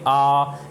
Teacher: दीर्घ स्वर बोलने में दुगना समय लग रहा है